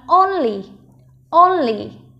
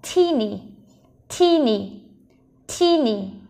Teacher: Trọng âm rơi vào âm đầu tiên